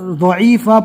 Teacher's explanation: اوپر جو ہم نے پڑھا تھا وہاں پر زو پڑھا تھا اور یہاں پر ضاد ہے. ضاد کے ادا کرنے میں ہلکی سی زال جیسی آواز آتی ہے، آپ اس کو زال کی آواز دے کر ضعیفہ پڑھیے.